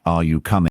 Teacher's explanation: in a yes or no question like are you coming? Your voice rises at the end.